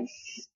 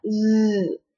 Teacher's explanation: Now the s does not have a voice in it, so you should not feel a vibration. But with the other sound that S makes a z, and there is a voice in it.